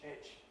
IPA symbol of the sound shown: ɪʧ